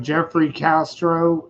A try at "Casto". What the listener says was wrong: Casto. There's no R, I believe.